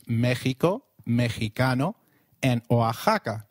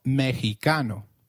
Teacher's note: it is pronounced as a throaty h in the words mexico mexicano and oaxaca